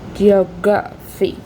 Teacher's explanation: the primary stress is on the second syllable